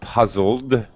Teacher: your vocal chords are vibrating with the l puzzle so now our e d has a d sound but no extra vowel sound puzzled okay puzzled okay puzzled there is a d sound at